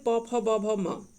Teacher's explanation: प फ ब भ ये सारे ओष्ठ से निकलता है